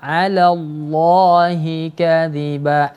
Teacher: Lam pada lafzul jalalah. Lam pada kata Allah ini dibaca tebal. Ya, karena sebelumnya huruf berharokat fathah.